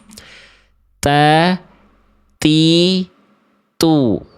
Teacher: Hams itu artinya terpercik nafas ada udara sedikit keluar dari huruf ta.